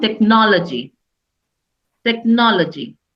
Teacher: नो पे हम sound पे ज्यादा स्ट्रेस देंगे, एंड टेक एंड लॉजी पे हम कम स्ट्रेस देंगे, इट विल बिकम टेक्नोलॉजी।